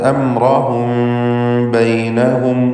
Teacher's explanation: മീമ് അല്പം ചുണ്ടുകൾ അമർത്തി വെക്കാതെ പരത്തി വെച്ചുകൊണ്ട്, ചുണ്ട് ടച്ച് ചെയ്തുകൊണ്ട് തന്നെ പരസ്പരം പൂട്ടി വെച്ച് തന്നെ ഉച്ചരിക്കുക. അംറഹും ബൈനഹും വഅസറു, ബൈനഹും വ, അവിടെ ഇൽഹാർ ഷഫവിയാണ്, മീമിനെ ഇൽഹാർ ചെയ്യണം. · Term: ഇഖ്ഫ ഷഫവി